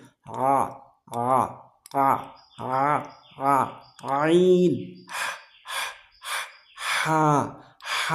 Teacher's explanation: আইন হা এটা হলকের মাঝখানে প্রেসার সৃষ্টি করতে হবে